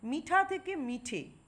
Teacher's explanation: মিঠা শব্দে ঠ এ আকার ছিল সেটা উঠে যায়নি এখানে স্বরলোপ হয়নি বরং ওই আকার স্বরধ্বনিটি এককারে পরিবর্তিত হয়েছে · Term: স্বরসঙ্গতি